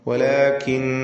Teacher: അല്ലാഹ് എന്ന ഇസ്മുൽ ജലാല ഇതിലുള്ള ലാമിനെ തഫ്ഖീം ചെയ്ത് തടിപ്പിച്ചുച്ചരിക്കുകയാണ് വേണ്ടത്. വലാകിന്നല്ലാഹ, ഇസ്മുൽ ജലാലയിലെ ലാം തൊട്ടു മുമ്പിൽ ഫത്ഹ വന്നതുകൊണ്ടാണ് അങ്ങനെ തഫ്ഖീം ചെയ്യുന്നത്.